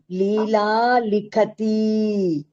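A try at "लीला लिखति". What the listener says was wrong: తీకి దీర్ఘం వద్దండి, లిఖతి అంతే. అవును, క్లియర్ లిఖతినే, తీకి దీర్ఘాలు పెట్టద్దు. లిఖతి, పఠతి అంతే.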